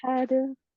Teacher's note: pakai ha tenggorokan tengah, jelaskan hawanya.